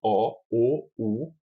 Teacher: Nas vogais posteriores, o dorso da língua progressivamente se eleva para trás, como ocorre na pronúncia de o, o, u.